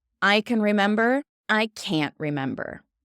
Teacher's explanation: in typical English fashion, we actually drop that T sound